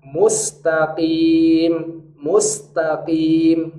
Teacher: Huruf qaf di sini huruf tebal, hanya kalau dia berharokat kasroh dia memiliki kaedah tafkhim nisbi, tebal yang sangat lemah. Rahangnya tidak naik ke rahang tebal, jadi tebal yang sangat lemah. · Kalau qaf berharokat kasroh, cara bacanya tafkhim nisbi, tebal yang lemah.